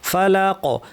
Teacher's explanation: ফালাক কফ ভারী এবং এখানে যেহেতু আমি সুকুন দিয়ে থামলাম কলকলা হবে।